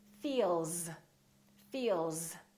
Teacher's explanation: my vocal chords that's a voiced sound therefore the s sounds like z